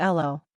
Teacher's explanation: the dropping of the H sound in Cockney